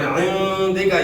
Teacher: عندک یہاں غنہ اخفاء کے ساتھ ہوگا